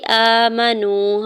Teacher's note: حمزہ کے اوپر کھڑی زبر 2 حرکت کھینچ کے ادا کریں گے۔ واو ساکن سے پہلے نون کے اوپر پیش ہے، واو ساکن کے اوپر کھڑی جو مد منفصل بھی ہے تو 4 سے 5 حرکت کھینچ کے ادا کریں گے۔